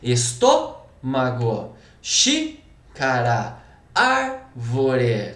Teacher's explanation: Proparoxítona, a sílaba tônica vai ser a antepenúltima.